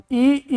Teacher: ई बोलते हैं मुंह आपका लगभग बंद होता है